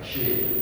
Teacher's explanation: Makhrajnya di tengah-tengah lidah. Jim, shin, ya, 3 huruf itu makhrajnya tengah. Shin. Ya, kalau shin itu kanan kirinya ada berbes is, apa itu ngeses, nanti termasuk huruf sofir atau huruf halus yang ada ngesesnya.